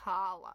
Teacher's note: It's actually a guttural H sound.